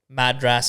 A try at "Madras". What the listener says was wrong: again, you're a bit hard on your vowels there. It's a Madras. It's a Madras. Yeah, Madras. You're putting the emphasis on the wrong vowel. It's Madras.